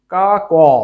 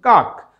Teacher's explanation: যদি আমরা এরকমভাবে বলি কা ক, অর্থাৎ কর সাথে একটা ক আছে, কিন্তু আমরা ওইভাবে কিন্তু কেউ উচ্চারণ করি না, ওটা তাহলে শুদ্ধ উচ্চারণ কাক। যখন কাক বলছি তখন কর লাস্ট শেষে ক থেমে যাচ্ছে, অর্থাৎ একটা ধাক্কা পাচ্ছে, তাহলে আমরা এটা বলতে পারি এক অক্ষর বিশিষ্ট একটি শব্দ। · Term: বদ্ধাক্ষর